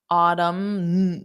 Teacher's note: for Autumn there is no n Sound